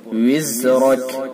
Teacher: زا کو سختی سے اور را کو پر